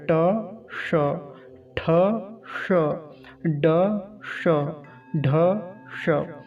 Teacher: ऊपर एक गोल घेरा सा होता है, ऊपर गड्ढे जैसा स्थान होता है हमारे मुख में। तो जहाँ पर ट बोलते समय हमारी जीवा जाके टकराती है उसको मूर्धा बोलते हैं। वहीं से ये भी उच्चारण होगा, इसलिए इसका नाम है मूर्धन्य शकार।